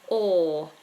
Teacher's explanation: this long or vowel the space inside the mouth is wide